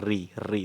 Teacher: जब हमारी जीभ मुड़ के बोलती है और उसमें वाइब्रेशन होता है तो उसे हम मूर्धा बोलते हैं